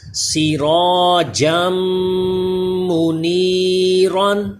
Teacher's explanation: جیم کو میم سے ملائیں، جیم میم دو زبر جم، تو یوں ایک الف کے برابر غنہ کریں